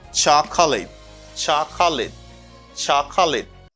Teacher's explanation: you don't pronounce this syllable chaka you just say chuck